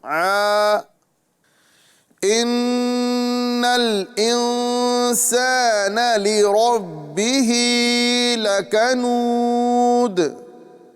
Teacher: नून मुशद्दद में एक अलिफ के बराबर गुना करेंगे